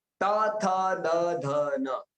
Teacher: जब हमारी जीभ है वो दांत को लगती है